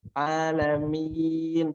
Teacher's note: tidak boleh ada suara dari hidung. Alamin, betul-betul ketika dipegang hidungnya itu nggak ada suaranya terhentikan.